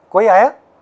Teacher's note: That's all right, raising intonation. It's fine, but this is a question.